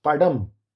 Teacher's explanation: that d is d retroflex, not dental.